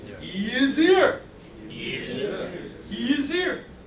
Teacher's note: S turns into a Z. H disappears. Z jumps on the ear.